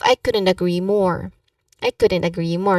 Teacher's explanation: So the stress here should be on agree more to highlight the intensity of your agreement.